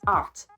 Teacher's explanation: if you don't pronounce the H on heart it becomes art · When you say the word heart, French speakers, they don't always pronounce the H, so it becomes art